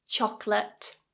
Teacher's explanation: chocolate two syllables not chocolate chocolate two syllables in English and that second syllable is an uh it's a schwa · Chocolate, two syllables. Choc-late. Not choco-late, cho-co-la-te.